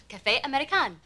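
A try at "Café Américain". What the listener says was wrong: No. Café Americain is more nasal, eh? Eh. Eh. Eh. You have a lazy tongue. I mean, your mouth is used to speaking English.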